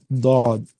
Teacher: زبان کی کروٹ، زبان کی کروٹ داڑھ کو لگنے سے ادا ہوتا ہے